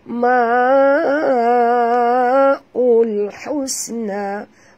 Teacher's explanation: Ma'ul di sini bacaannya panjang 4 hingga 5 harakat. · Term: Mat wajib mutasil